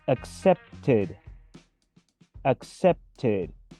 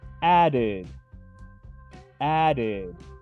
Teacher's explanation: Cuando un verbo tiene como última consonante una de estas letras, el final de su pasado simple o también su participio suena como una ID